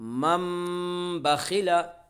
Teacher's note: नून साकिन के बाद बा रहा है, इसलिए नून साकिन को मीम से बदल कर गुन्ना और इख्फा के साथ पढ़ेंगे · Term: इक़लाब